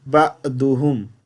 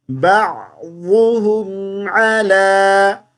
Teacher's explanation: عین کو حمزہ نہیں پڑھیں گے